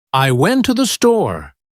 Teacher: The words to and the become so weak that they almost disappear. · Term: unstressed words